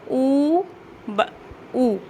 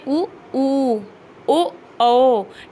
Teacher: आगे से राउंड हो रहे हैं, बिल्कुल आपके लिप्स जो हैं राउंड हो रहे हैं, एक सर्कल के जैसा बन रहा है। ठीक है, जिसको कहते हैं वृत्तनुमा संरचना बन रही है। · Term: वृत्ताकार स्वर